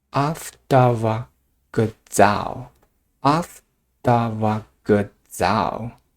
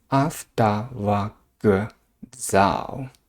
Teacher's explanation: This k pronounced as g here. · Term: voicing assimilation